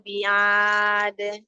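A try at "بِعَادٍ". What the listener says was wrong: Sempurnakan huruf ain. Tidak bi'ad, huruf tenggorokan tengah.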